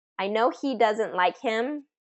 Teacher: function words that start with H you want to delete the H